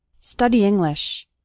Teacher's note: Those two words kind of run together. The E from study and the I from English kind of combine.